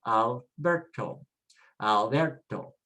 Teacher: It ends with a vowel, so the stress is next to the last